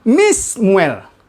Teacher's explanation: Ya, nunnya hilang, ya, menjadi mi, se, muel. Ya. Jadi bacanya menjadi Mismuel.